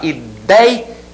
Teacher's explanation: Ela apresenta o ditongo ei, com essa pronúncia, aberto, e na sílaba tônica